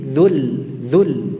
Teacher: kita membacanya pendek dengan menghilangkan sukun yang pertama